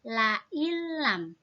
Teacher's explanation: Nunnya langsung masuk ke huruf lam tanpa didengung.